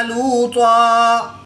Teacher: دو زبر کی تنوین کو وقف کی حالت میں الف مدہ سے تبدیل کر کے پڑھیں گے۔